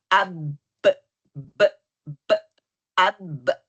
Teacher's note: پہلے تصادم ہو رہا ہے، پھر تباعد، پھر قلقلہ بننا۔